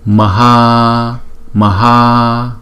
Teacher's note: Chữ a đầu một nhịp, chữ a sau hai nhịp.